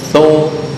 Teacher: Bukan syu tapi thu. Ujung lidah dengan gigi atas.